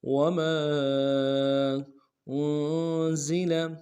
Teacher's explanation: حمزہ کو نون کے سامنے لانا ہے، نون ساکن غنہ کریں گے، اور زا میں سیٹی ہوگی۔